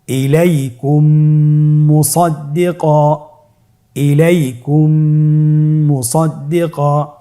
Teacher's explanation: মিম সাকিনকে পরবর্তী মিমের সাথে মিলিয়ে পড়তে হবে গুণনার সহিত